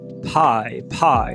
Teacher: Nome técnico, é um ditongo crescente, com início na vogal baixa central não arredondada e faz o glide, escorrega para vogal alta anterior não arredondada